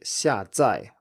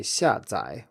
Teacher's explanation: If we look up the word for download in Chinese in an official dictionary, it will say 下载 with 2 fourth tones, but this pronunciation is very rare and most people say 下载 with a third tone on the second syllable